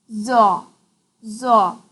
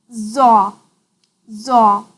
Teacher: While pronouncing za, tongue's backside goes to the upside.